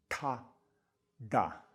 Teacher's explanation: instead of touching the tongue on that little ridge behind the teeth, it's a little bit further back